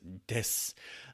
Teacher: Desu is usually kind of left off, that little oo at the end. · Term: vowel devoicing